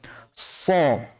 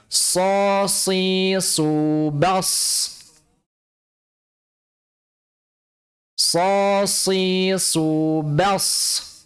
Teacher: Karena 'sh' makhraj, sekali lagi , berada di ujung lidah yang terletak di gigi seri bawah. Gigi seri bawah. Kemudian terdengar suara mendesis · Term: 'shad'